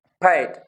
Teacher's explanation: p के ऊपर ह, h का जो साउंड है वो दे देते हैं। इट मीन्स के जो द पफ ऑफ एयर है वो अकम्पनी करेगी दिस साउंड को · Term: एस्पिरेशन